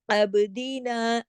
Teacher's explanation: اب عین باریک ہے، با پہ کلکلا ہوگا کیونکہ کتبن جدن 5 حروف ایسے ہیں نا کتبن جدن کے، جب وہ سکون میں ہوتے ہیں تو ان کو ہلا کے پڑھا جاتا ہے کلکلے کے ساتھ۔